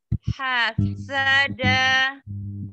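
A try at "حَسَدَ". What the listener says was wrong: Masih di huruf sin. Hasad tidak ada tasjid ya, Mi.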